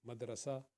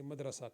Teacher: دال کا قلقلہ ہوگا عربی کے اندر، اردو میں مدرسہ کہیں گے، مدرسہ، قلقلہ کرنے کی ضرورت نہیں۔